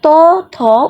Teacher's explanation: যখন আমরা ত, থ উচ্চারণ করতেছি তখন আমাদের জিভের যে ডোকাটা সেটা আমাদের উপরের পাটির দাঁতের সাথে লাগতেছে, তাহলে জিভের ডোকাটা হচ্ছে মুখ্য বাক্যপ্রত্যঙ্গ আর উপরের পাটি দাঁতটি হচ্ছে গৌণ বাক্যপ্রত্যঙ্গ। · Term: দন্ত ব্যঞ্জন